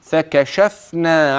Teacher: حينما سكنت الفاء وضحتها حتى لا تبتر منك